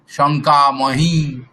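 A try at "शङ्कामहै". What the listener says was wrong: মহি না মহই।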